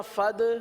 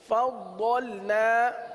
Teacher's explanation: ضاد کے اندر جماؤ کریں گے، صفت استطالت کی وجہ سے یہ اس طریقے سے ادا ہوتا ہے ، فضلنا تو دال بن گیا، اس طرح فد، یہ بھی